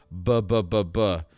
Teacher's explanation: Your vocal folds are vibrating, and so it's called a pitched plosive.